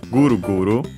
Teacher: And I mentioned that, I think I've already mentioned that we can also make the consonants, the K voiced, and so add the Dakuten and have so Guru Guru.